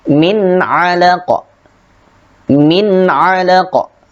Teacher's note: nun sukun bertemu dengan ain, maka dibaca jelas juga